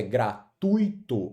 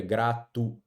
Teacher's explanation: a pronúncia ó, é com ditongo e não com hiato. Se fosse com hiato, ficaria gratuito, e aí nós teríamos que ter um acento gráfico obrigatório aqui.